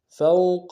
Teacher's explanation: واو لین ہے بغیر کھینچے پڑیں گے